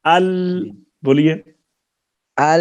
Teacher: اس کے اوپر تالو کے ساتھ زبان کا کنارہ اور تھوڑا سا حصہ لگتا ہے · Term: لام کا مخرج